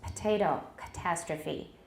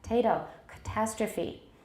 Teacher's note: unstressed vowels which may become voiceless in words such as potato, catastrophe. For some people, this happens only if the following syllable begins with a voiceless stop.